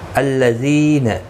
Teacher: ذی یا مدہ ہے، ایک الف کی مقدار کے برابر کھینچ کر پڑھیں گے